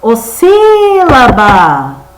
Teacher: Qual que eu falei mais forte? O si. Então, o si é que vai ser a minha sílaba mais forte, ou seja, ela vai ser a sílaba tônica.